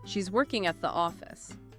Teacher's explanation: Two informational booms, working, the main verb, and office, the noun. The auxiliary verb is is already contracted and the preposition and article are minimized. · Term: reduction